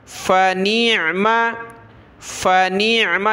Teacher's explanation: فنعم، فا زبر فا، نون عین زیر نیع، میم زبر ما. نون کو عین کے ساتھ ملائے، عین کو گلے سے نکالیں